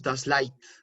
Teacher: cuando tenemos las vocales e I juntas, no suena EI, sino que suena AI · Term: diptongo EI